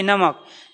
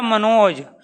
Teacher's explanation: नाक और मुख दोनों से एर निकलेगी। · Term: अनुनासिक